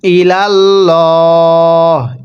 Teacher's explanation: আল্লাহ শব্দের পূর্বে জবর দেখলে অবশ্যই আল্লাহ শব্দটিকে মোটা করে পড়তে হয়